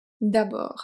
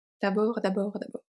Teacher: So the final D is silent.